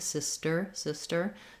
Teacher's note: It's part of the ST blend, sister, sister. So just don't let a big puff of air out for your T, sister. If it helps to think about it like a D, that's fine.